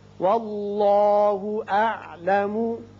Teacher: اس میں اللہ میں لام پر ہوگا اس لیے کہ پہلے زبر ہے.